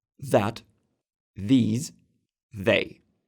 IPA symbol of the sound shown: ð